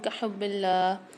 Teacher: کحب اللہ میں حا کی آواز کو واضح کریں گے، اللہ کے لام کو باریک پڑھیں گے